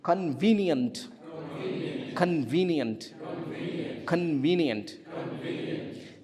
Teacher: Three syllables. And where is the stress? Two. second syllable.